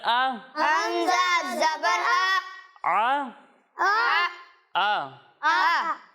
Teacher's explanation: جب ہم حمزہ کی ادائیگی کریں گے تو اسے حلق کے نچلے حصے سے پڑھیں گے، یعنی اسے پڑھیں گے عین زبر ع، اور اسے پڑھیں گے حمزہ زبر آ۔